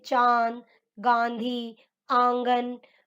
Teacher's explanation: अनुनासिक इनका उच्चारण नाक और गले दोनों से होता है